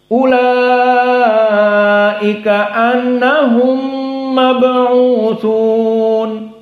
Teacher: Mim sakinah annahum dengan mab'utsun, maka bisa diidghamkan